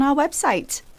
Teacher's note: she didn't pronounce the letter R because its position is at the end of the word. So that's why it will be silent.